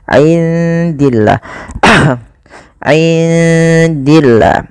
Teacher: indi di sini ada bacaan ikhfa, maka suara nunnya samarkan kepada huruf dal. · Lafal Allah kalau didahului dengan kasrah tidak boleh dibaca tebal, tidak boleh dibaca dengan min indillah, tidak, tapi dia dibaca dengan bacaan tipis.